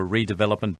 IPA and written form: ˌriːdɪˈvɛləpmənt (redevelopment)